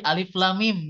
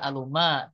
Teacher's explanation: bunyi vokal A, bunyi vokal I, bunyi vokal U itu tidak dibunyikan di huruf muqatta'ah. Akan tetapi dibacanya sesuai dari bunyi huruf aslinya.